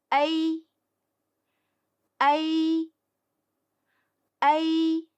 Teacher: 要先发第一个字母a的音，然后很快滑向第二个字母e的音。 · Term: 复韵母